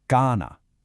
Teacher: Draw out that first a sound.